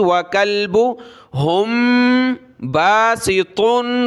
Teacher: मीम साकिन के बाद बा है, नाक में आवाज़ पैदा की